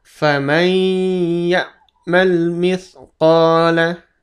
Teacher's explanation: Faman, dia langsung masuk ke huruf ya. Nun matinya langsung masuk ke huruf ya. Jadi seperti dilewat ya. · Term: bacaan dengung